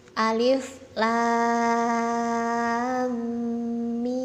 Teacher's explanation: Untuk yang mat lazim musaqqal harfi itu dibaca panjang 6 harokat